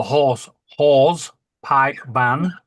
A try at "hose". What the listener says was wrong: It sounded like you said horse.